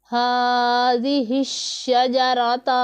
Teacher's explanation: ہاذہ الشجرۃ، ہا کے اوپر کھڑا زبر ہے، اسے ایک الف کے جتنا لمبا کریں گے، اور شین کے اوپر شد ہے تو شد والا حرف 2 مرتبہ پڑھا جاتا ہے، ایک مرتبہ اپنے سے پہلے متحرک حرف کے ساتھ ملا کر، دوسری مرتبہ خود اپنی حرکت کے مطابق ذرا رک کر ہم اسے ادا کرتے ہیں۔